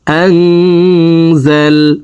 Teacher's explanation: আং এখানে ইকফা গুন্না, নুন সাকিনের পরে ইকফার 15টি হরফের ভিতরে একটি হরফ যা আসছে, এই কারণে এই নুন সাকিনকে নাকের ভিতরে লুকাইয়া গুন্নার সহিত পড়ব